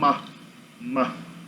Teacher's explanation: Mas se você adicionar, pegar o B e adicionar uma passagem de ar pelo nariz, você vai ter um ma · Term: bilabial nasal